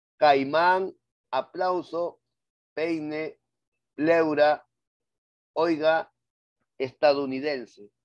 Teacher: vamos acá al decreciente vocal abierta más vocal cerrada caimán aplauso peine pleura oiga estadounidense todos esos tienen diptongos decrecientes